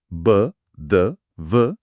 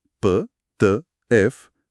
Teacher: Sí, las cuerdas vocales. Si vibran al hacer el sonido, B, D, V, es sonoro. Si no vibran, P, T, F, es sordo.